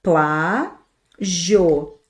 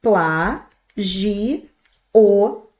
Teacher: Eu posso fazer pla gi o, deixei o final separado. Quando eu deixo o final junto, eu tenho aqui, ó, uma palavra paroxítona que acaba em ditongo. Quando eu deixo o final separado, eu tenho aqui uma palavra proparoxítona.